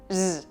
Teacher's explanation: la Z es z, o sea, como una S sonora en inglés.